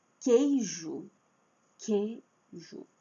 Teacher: o u não tem som. O u aqui não aparece, ele só está ali mas ele não tem som